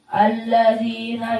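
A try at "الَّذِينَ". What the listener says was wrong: Dha-nya kok seperti mendekati zi. Allazi khata' hada. Wailu yawma idzin. Dha idin. Alladzina, jangan allazina.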